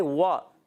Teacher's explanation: وَإِذَا مروا بِهِمْ. واو کی ادائیگی، واو ہونٹوں کی گولائی سے ادا ہوتا ہے. واو متحرک ہے، ہونٹ گول کریں.